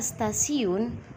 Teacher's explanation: Asimilasi progresif umpamanya bunyi T adalah bunyi apikoalveolar atau apikodental. Tetapi pada kata stasiun, bunyi T itu dilafalkan sebagai bunyi T laminoalveolar. Perubahan bunyi hambat apikoalveolar T menjadi bunyi hambat laminoalveolar adalah karena pengaruh secara progresif dari bunyi geseran laminopalatal S.